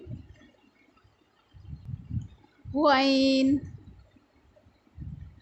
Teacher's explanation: حلق کے اوپر والے حصے سے منہ کی طرف